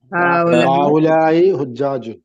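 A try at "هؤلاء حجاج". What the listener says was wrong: ഹാഉലായി ഹുജ്ജാജുൻ. ഹാഉലായി അല്ല, ഒരു കേരള ആയിട്ടല്ല പറയാം. ഹാഉലായി ഹംസ എന്താണ്? ടെമ്പറുള്ള അക്ഷരമാണ്.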